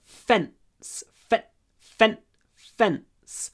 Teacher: it's a long F and then it's a short n before the S sound at the end